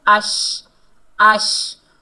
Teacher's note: جب شین کو ادا کریں گے تو ہماری آواز پھیلتی ہوئی محسوس ہوتی ہے